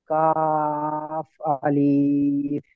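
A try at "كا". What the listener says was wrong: আলিফ টান দেবেন না, কাফ আলিফ।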